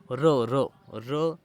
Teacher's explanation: हा वर्ण उच्चारताना जीभ थरथर कापते, त्याला कंपित वर्ण असे म्हणतात